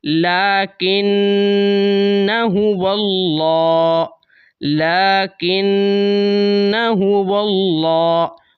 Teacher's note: آپ نے الف کی وجہ سے نون کو لمبا کر کے نہیں پڑھنا۔ اس گول دائرے کا یہی مطلب ہے۔